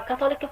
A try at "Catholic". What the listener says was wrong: This is pronounced as اسمها Catholic. ماكو شيء اسمه O Catholic. It's Catholic. Just Catholic. The O is almost silent. But you can say Catholicism, but Catholic. Catholicism, and Catholic.